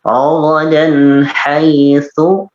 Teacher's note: sa kecil, sa ujung lidah di bertemu dengan gigi seri atas, sa dari sa langsung pindah ke sya ya.